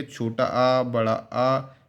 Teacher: इसमें आपका मुंह पूरा खुला रहता है इसमें आपका जो होठ है वह गोल नहीं होते हैं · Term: आवृत मुखी